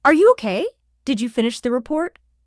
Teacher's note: your voice pitch typically goes up at the very end